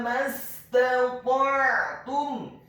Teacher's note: Huruf ta-nya dibaca tafkhim tebal dengan posisi bibir bawah kita agak tertutup dan posisi lidah kita di langit-langit atas. Dibaca tafkhim tebal, fathah satu harokat.